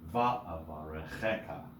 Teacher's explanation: many words with many syllables might have secondary accents like va'avarecheka, right? So va and che accented.